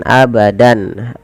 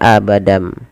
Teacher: Membalikkan suara tanwin atau nun sukun berubah menjadi suara mim. Awalnya pakai n, abadan, abadan berubah menjadi abadam. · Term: iqlab, iklab